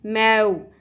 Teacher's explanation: واو ساکن حرف لین کہلائے گا اور نرمی سے پڑھنا ہے، مور نہیں پڑھنا.